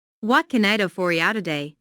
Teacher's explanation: Notice that this question starts with what. So the intonation drops at the end of the question.